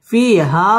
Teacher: মদ মুনফাসিল তিন আলিফ টান দিয়ে পড়তে হবে